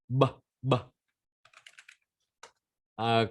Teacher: Ok, như là rung họng các bạn nhé. Âm B sẽ bằng âm P cộng với rung họng.